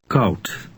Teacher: Dutch OU resembles the English sound ow, as in the word how, only it's shorter.